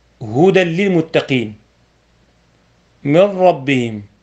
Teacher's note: إدغام بغير غنة، وذلك في اللام والراء